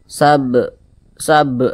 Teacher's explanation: di samping huruf Qalqalah itu ada lima salah satunya huruf ba kalau dia sukun pantulkan cara bacanya